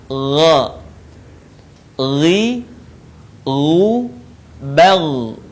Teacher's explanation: Huruf ini keluar dari tenggorokan yang terdekat dengan rongga mulut kita. Diucapkan dengan lembut suaranya tanpa mengalir udaranya. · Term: huruf gha